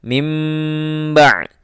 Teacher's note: ya Ini nun mati lalu bertemu dengan mbak maka hukumnya adalah iqlab bertukarnya bunyi bak menjadi Bunyi mim